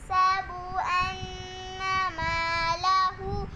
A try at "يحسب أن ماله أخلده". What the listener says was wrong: मत छोड़ दिया मालह देखो अपनी मत भी छोड़ी और गुन्ना भी يحسب أن ماله أخلده